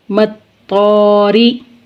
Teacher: مطا، مطا، طا کو پر پڑھیں گے، را زیر ری، مطاری، را کے نیچے زیر ہے، را کو باریک پڑھیں گے